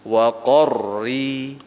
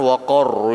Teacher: tafkhim kemudian ro kasrahnya menjadi menjadi terkik ya berarti bacanya waq qornya tebal rinya tipis nah gitu dia waqorri jadi jangan waqor nah jangan gitu waqor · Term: tarkik